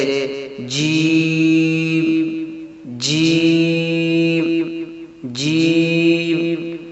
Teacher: بیچ زبان بالمقابل اوپر کے تالو سے لگے تو اس سے جیم ادا ہوتا ہے